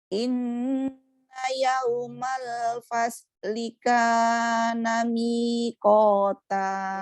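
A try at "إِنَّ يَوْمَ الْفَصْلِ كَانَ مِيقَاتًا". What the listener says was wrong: Nah, seperti itu.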